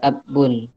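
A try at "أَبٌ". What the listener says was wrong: Enggak pakai tasjid. Abun langsung itu. Abun. Nah, jadi abun bukan abun, nah, abun. Kemudian yang abun langsung, enggak pakai tasjid.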